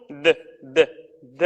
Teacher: So the D sound, try to connect more with the vocal cords. I mean, the only difference between T and D, like te, de, ti, di, it's the connection with the chords.